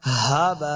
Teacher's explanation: ہاں کو حلق کے نچلے والے حصے سے ادا کرنا ہے · با کے آگے الف، اس کے اوپر بڑی مد ہے تو ہم نے اس کو لمبا کرنا ہے